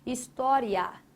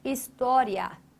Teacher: o som do A, ele é mais visível. O som do A, ele é mais nítido do que o som do I. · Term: Ditongo crescente